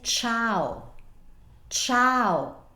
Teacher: when you pronounce the c or the G Italian there's no I it's a neutral sound that only contains the consonant